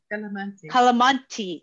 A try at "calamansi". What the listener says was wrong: It is Filipino, yeah. And it's calamansi with like an S sound.